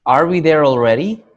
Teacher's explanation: my intonation rose so my pitch got higher and that's because I'm asking a question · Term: rising intonation